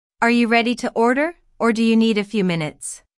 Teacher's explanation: The word or signals a choice here. Notice the rising intonation on order, and the falling intonation on minutes.